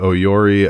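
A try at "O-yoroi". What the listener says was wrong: Oyori. Yeah, you're cutting out a syllable. Oyori. Pronounce every.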